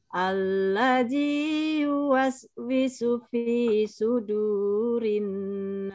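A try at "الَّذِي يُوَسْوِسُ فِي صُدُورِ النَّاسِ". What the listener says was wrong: Nah, du-nya kepanjangan hati. Fi sudurin. Langsung. su-nya kepanjangan hati-hati, Bu. Ya, yuwaswisu, tapi yuwaswisu fi sudu.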